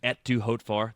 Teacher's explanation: You don't say the T in et.